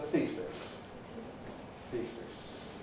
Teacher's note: Voiceless S, therefore, Pre-Fortis Clipping